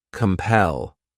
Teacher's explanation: This word has 2 syllables, and the stress is on that second syllable.